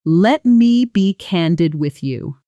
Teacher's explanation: Notice the stress pattern. Candid. Gets a firm, slightly heavier emphasis, almost like you're preparing the listener for something important.